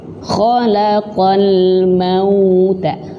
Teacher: huruf waw di sini memiliki sifat sama seperti huruf ya, yaitu lin